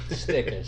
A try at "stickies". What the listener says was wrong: Stickies. You gotta say it like that though. Stickies. No R in the end.